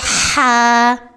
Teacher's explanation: صرف سانس کی روانی ہے، مسلسل سانس سے ادا ہوتا ہے · یہ حرف نرم، سانس والا اور ہلکا ہوتا ہے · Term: حرف ہا